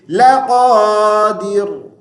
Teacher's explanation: قاف کو موٹی آواز سے پڑھیں گے اور دال کو مجہول نہیں کریں گے